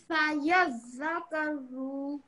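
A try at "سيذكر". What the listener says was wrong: You have to say it with more force, this one. At the moment, it sounds like they're not connected.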